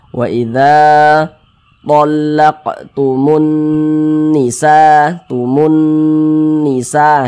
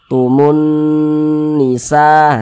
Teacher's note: cara membacanya ya digunahkan digunahkan tuh ya didengungkan gitu jadi suaranya itu kita tahan kita panjangkan sejenak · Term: gunah musyaddadah, gunnah musyaddadah